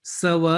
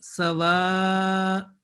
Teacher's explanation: a light, very light jerk is because of hamza, because hamza is produced from the mouth cavity.